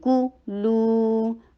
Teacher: کاف شارٹ، ضمہ کے لیے ہونٹوں کو گول اور لائٹ رکھیے